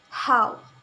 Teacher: This consonant sound is produced when the flow of air is stopped by the glottis with some constriction of the glottis classing and then release it. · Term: glottal sound